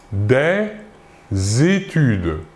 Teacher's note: Autre exemple, toujours avec un article, des études. Ici, nous faisons la liaison entre le S et le E